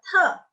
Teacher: Terus ada D dibacanya T. T di sini dibacanya ada aspirasi juga.